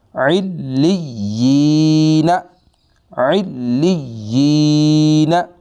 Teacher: پہلے والے حرف کے نیچے زیر ہے، اس کو کہتے ہیں یا مدہ، اس کی مقدار بھی ایک الف ہوتی ہے، اس کو ایک الف جتنا ہم نے لمبا کرنا ہے